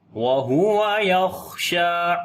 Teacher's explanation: شین کو لمبا کریں گے، کھڑی زبر ہے